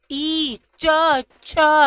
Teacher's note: च छ ज झ य य श सब में तालू का प्रयोग किया जा रहा है